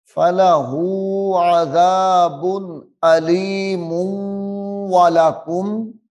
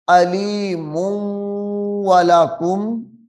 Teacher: ادغام کریں گے یعنی غنہ ہوگا